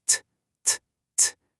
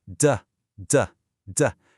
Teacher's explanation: Take the t sound and the d sound. The only physical difference is a little vibration in your throat.